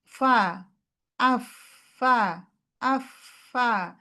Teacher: জিহ্বার কোনোই কাজ নাই। তো এখানে কাজ হচ্ছে উপরের দাঁত আর নিচের ঠোঁট · হামস আছে, রখ আছে, মানে আওয়াজ আর বাতাস দুইটাই চলমান থাকবে · হ্যাঁ, ঠোঁট যেন না লাগে